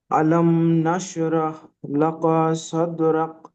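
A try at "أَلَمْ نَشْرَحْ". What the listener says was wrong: দাঁড়ানো যাবে না, মিম সাকিনের পরে নুন এসছে, এখানে মিম সাকিনটা গুণনা হবে না, ইজারের সাথে হবে। আলাম নাশরাহ লাকা সাদরাক, কোনোটাই টান হবে না আর গুণনাও হবে না।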